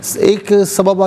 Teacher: ناظرین یہاں پر آپ دیکھیں سبباً، دونوں جگہوں پر سبباً ہے اور دو زبر کی تنوین ہے۔ دو زبر کی تنوین پر وقف کیا جائے تو وہ تنوین الف سے چینج ہو جاتی ہے، تو دونوں جگہ وقف کی صورت میں سببا پڑھا جائے گا۔